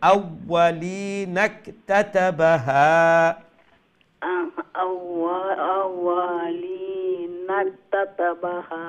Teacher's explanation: নুনকে কাফের সাথে লম্বা না করে সরাসরি তাড়াতাড়ি জয়েন করতে হবে